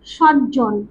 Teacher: প্রভাবিত হয়ে তাদের মধ্যে সমতা রক্ষা করলো, দুটি জ হয়ে গেল, খণ্ডের তা পরিবর্তিত হয়ে গিয়ে বর্গের জয় রূপ নিল। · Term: সমীভবন